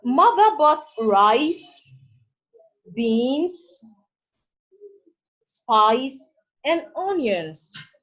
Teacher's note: The second use of the rising tone is to make lists.